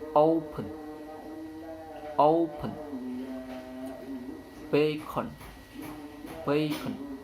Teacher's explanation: n could become bilabial when preceded by a bilabial, or could become velar if preceded by a velar plosive in the same word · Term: alveolar syllabic nasal assimilation